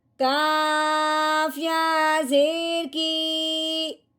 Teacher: کاف کو ہم نے یا کے ساتھ ملایا اور ساتھ ساتھ لمبا بھی کیا